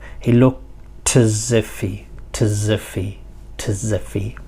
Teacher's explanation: But remember, we said that he, or I, the pronouns, are sort of semi-weak forms. And in semi-weak forms, the h sound becomes a lot weaker than usual. And often what happens then is that the previous consonant sound joins to that. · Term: connected speech